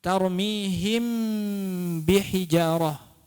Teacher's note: Karena mim dan ba ini makhrajnya berada pada dua bibir. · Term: ikfa syafawi